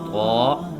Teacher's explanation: जुबान की नोक तनाया उलिया की जड़